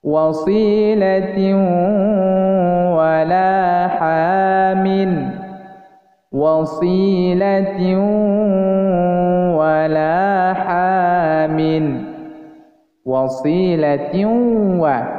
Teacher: maka kita harus memonyongkan bibir ke depan, baik bibir atas dan bibir bawah, sehingga terdengar bunyi dengung.